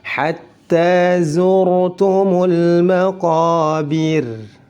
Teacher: Karena sebelum ra ada harakat kasrah, ra waqaf atau ra sukun karena diwaqafkan dan sebelumnya ada harakat kasrah, maka harus dibaca tipis. Disebut dengan tarqiq.